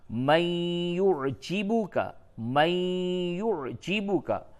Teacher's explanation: یہ نون ساکن کے بعد یا ہے، ادغام مع الغنہ ہوگا